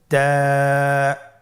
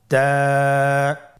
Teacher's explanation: তায়ের মাখরাজ কোন জায়গা থেকে? জিহ্বার আগা সামনের উপরের দুই দাঁতের গোড়ার সঙ্গে লাগিয়ে উচ্চারিত হয়।